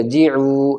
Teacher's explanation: واو ساکن سے پہلے عین کے اوپر پیش ہے، واو مد ہوگا، واو کھنچ کر پڑھا جائے گا